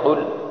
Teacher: قاف یہ موٹی قاف ہے، 2 نقطوں والی قاف ہے۔ قل، اس کو گلے کے درمیان سے قل نکالیں گے لیکن ذرا منہ کی جانب